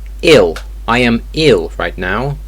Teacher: if it's at the end or the middle of the word L is pronounced as a w sound